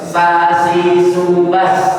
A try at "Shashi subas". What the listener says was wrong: Sementara di mana shin? Shin itu di tengah, bukan di ujung.